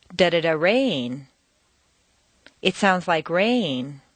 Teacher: rain is the new information it's the most important word in that sentence